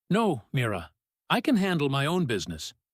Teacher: I can handle my own business." Let no snap out fast. Let own business land firm and clipped, almost defensive. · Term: tightness